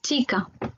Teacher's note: le ch qui se prononce comme s'il y avait un T devant